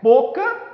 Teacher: Boca, a sílaba forte é bo.